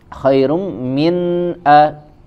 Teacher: di sini ada izhar tidak ada tambahan gunah